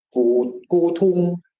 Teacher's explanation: So the word gudong, antique, should be gudong, and it doesn't have any aspiration in the Chinese form, but sometimes it's pronounced gutung with aspirated t. That's hypercorrection, which suggests that Chinese speakers are conscious, Zhuang speakers are conscious of the prestige of aspiration in Chinese and in speaking Zhuang with a Chinese accent.